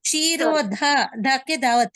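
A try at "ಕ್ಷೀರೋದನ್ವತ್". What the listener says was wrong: ಅಲ್ಲ ಧನ್ವತ್ ಅಲ್ಲ, ಧನ್ವತ್ ಇಲ್ಲ. ಕ್ಷೀರೋ ಧನ್ವತ್, ದಾಗೆ ಮಹಾಪ್ರಾಣ ಇಲ್ಲ, ಅಲ್ಪ ಪ್ರಾಣದ ಅದು. ಕ್ಷೀರೋ ಧನ್ವತ್.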